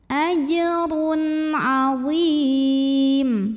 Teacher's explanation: Karena ada tanwin dhammah ketemu dengan huruf halqi atau huruf tenggorokan, yaitu ain. Maka cara baca tanwinnya ini adalah diizharkan. Jadi bunyi N-nya jelas. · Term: izhar halqi